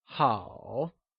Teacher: Good translates to 好, and it is also pronounced using a falling, rising tone · It is said with a falling, rising tone, also known as the third tone